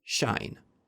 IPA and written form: ʃaɪn (shine)